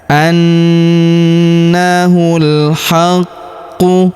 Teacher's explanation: Huruf ku kita tahan dan tekan karena terdapat tanda tasydid di atasnya.